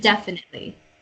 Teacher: The emphasis is on the first syllable, and then the rest are kind of even. There's no more like up and down.